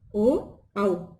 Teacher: इनका उच्चारण जो है कंठ और ओष्ठ दोनों के द्वारा होता है। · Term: कंठोस्थ